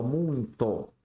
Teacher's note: O U vai ser a vogal e o I vai ser a semivogal. E a gente vai ter um ditongo decrescente.